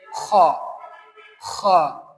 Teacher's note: sound comes from the upper throat. Strong and airy sound.